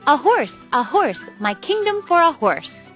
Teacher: The next syllable, unstressed, is followed by horse, which is stressed. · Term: iamb